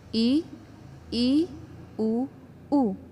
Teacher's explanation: ये संख्या में 4 होते हैं, ई उ, यानी कि जब हम ई उ का उच्चारण करते हैं तो हमारा मुख सकरा यानी कम खुलता है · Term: संवृत स्वर